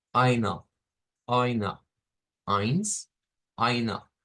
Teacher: miren qué pasa con la E. Se convierte en un schwa.